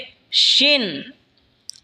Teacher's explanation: শিন জিহ্বার মধ্যখান তার বরাবর ওপরে তালের সঙ্গে লাগা উচ্চারণ হবে শিন